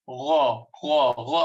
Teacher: gha has got add some moisture. It's not as dry as kha. Kha should not be the whole kha totally cracking sound, but gha has got more moisture.